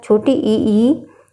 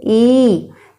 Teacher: इन स्वरों के उच्चारण में हर्ष स्वर से दुगना समय लगता है। मतलब जितना समय हर्ष स्वर बोलने में लगेगा उससे ठीक दुगना दीर्घ स्वर में लगता है।